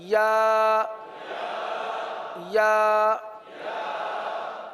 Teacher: زبان کا درمیان اور تالو کا درمیان